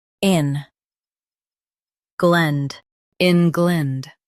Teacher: Emphasize ing and keep glend soft.